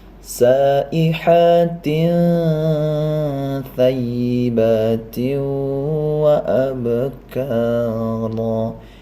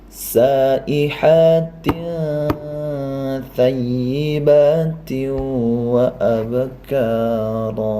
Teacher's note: Cara membacanya adalah sama, mempersiapkan ke huruf tha dengan disertai dengung dan samar-samar.